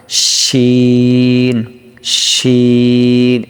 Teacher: জিহ্বার মধ্যখান তার বরাবর উপরে তালুর সঙ্গে লাগিয়ে জিম শিন ইয়া উচ্চারিত হয়